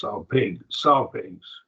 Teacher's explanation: So two syllables. Salpigs. Accent on the first syllable.